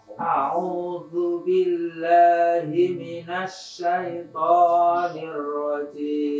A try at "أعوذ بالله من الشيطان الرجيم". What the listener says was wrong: Jangan nambah panjang. Langsung sikat. Minasyaitani. Langsung.